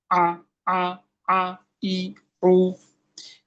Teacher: জিজ্ঞেস করা হয় কোথা হতে, কণ্ঠনালীর মাঝখান হতে। কিভাবে, হালকা চেপে পাতলা করে। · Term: আইন